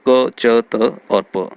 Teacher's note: क, च, त और प, ये अघोष और अल्प प्राण है।